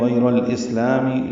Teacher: حمزہ کی صفت جہر کی ہوتی ہے، سین ساکن پہ ہمس ہے۔ ہمس اور جہر یہ ایک دوسرے کے متضاد صفات ہیں۔